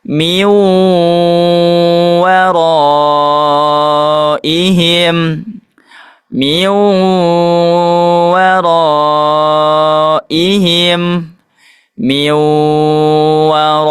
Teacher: didengungkan ee dengan sempurna dan dimasukkan ke huruf selanjutnya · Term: idgham bigunah